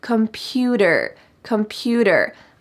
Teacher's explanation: Notice that the T changes to a D sound in American English.